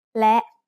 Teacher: แ ล ะ is a high tone because it has an initial low-class consonant with a short vowel and a dead stop.